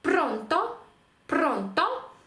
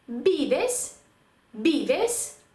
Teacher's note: наголос у такому слові ви мусите поставити на передостанній склад тобто другий склад з кінця